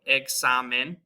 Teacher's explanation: It's got our KS sound in English, kind of just how we would say the word exam.